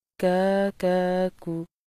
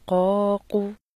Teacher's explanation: کاف کی آواز باریک ہوتی ہے، قاف کی آواز موٹی ہوتی ہے۔